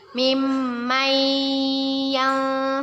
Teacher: dengan huruf ya bacaan nun sukun nya kita masukkan kepada huruf ya dengan berdengung dan ditahan dua harokat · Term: idgham bighunnah